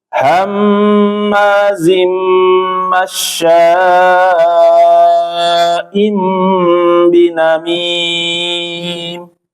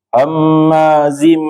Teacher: Jadi jangan sampai terlalu panjang tetapi sekadarnya aja yaitu empat harakat.